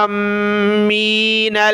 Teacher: وَلَا الْقَلَائِدَ وَلَا آمِّينَ الْبَيْتَ الْحَرَامَ، اس کو پڑھنا ہے آمین، حمزہ کے اوپر کھڑا زبر اور مد ہے تو اس کو زیادہ کھینچنا ہے ، کھینچتے ہوئے میم کو ملا دینا ہے، کھینچتے ہوئے میم